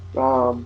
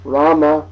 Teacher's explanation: technically speaking this word would always be pronounced ra ra but in the north of India they just say r r in the south of India they say the full original Sanskrit pronunciation